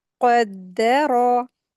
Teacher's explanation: कॉफ heavy letter है, हलक से अदा करेंगे इसको अच्छे से इसके मखरज के साथ। और फिर दाल के ऊपर शद्द लगी हुई है, अच्छे से इसको अदा करेंगे।